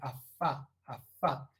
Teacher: dental eso creo que es muy evidente al producir afa afa el labio inferior entra en contacto con los incisivos superiores y es sorda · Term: labio dental